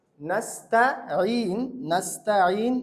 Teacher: এই সিন বলার সময় আওয়াজটা করতে হবে বাঁশির মতন